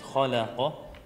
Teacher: Kha is heavy, the Lam is light, the Qaf is heavy. You made it sort of all heavy. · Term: heavy and light letters